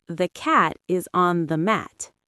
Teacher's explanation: The beat between cat and mat is the same even if we had more small words in between. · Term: stress-timed rhythm